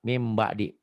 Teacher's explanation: Bunyi nun matinya berubah jadi m. Min jadi mim, ya. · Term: iklab